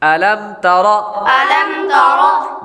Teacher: میم ساکن کے بعد تا با اور میم کے علاوہ آ رہا ہے تو اس لیے غنہ نہیں کریں گے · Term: اظہار شفوی